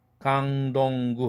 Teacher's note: 강동구 할 때 강동구 할 때 강 할 때 그는 무성음이지만 덩 할 때 드 사운드는 이미 유성음화 됐죠. 응이라는 유성음과 오라는 모음 사이에 꼈으니까. 구도 마찬가지. 응이라는 동 할 때 응이라는 유성 자음과 우라는 모음 사이에 꼈으니까 아주 부드러운 유성음으로 바뀝니다. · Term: 유성동화